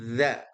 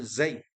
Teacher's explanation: kalau za itu digigit, kalau zai ini nggak perlu digigit, posisi lidahnya ke bawah.